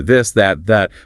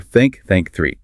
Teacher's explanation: Put your fingers on your throat. You should feel vibration for this, that, that, but no vibration for think. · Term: voiced